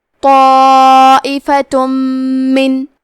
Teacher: آخری میں تا پہ تنوین پیش ہے، پھر حرف المیم ہے کلمت من، یہاں حکم ہے ادغام بغنہ، تو ہم تنوین کو میم میں ملا کے غنہ اور تشدید کے ساتھ یہ حکم کو ادا کریں گے